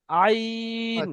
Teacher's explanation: আইন গিয়ে একটু বেশি টান দেন, তিন ডবল টান দিতে হবে।